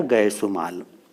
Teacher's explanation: क का लोप हो जाता है और उ बच गया, तो दोनों उ जब मिल गए तो दीर्घ उ बन गया, तो बन गया गयसुमाल।